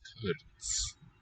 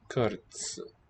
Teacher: The modified T there makes it a ts, one with a delayed release there, TS sound.